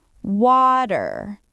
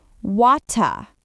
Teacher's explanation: American water soft t sound. British water clear t sound.